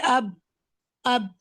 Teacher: बा अदा करने के लिए आप दोनों लिप्स को स्ट्रांगली आपस में प्रेस करते हैं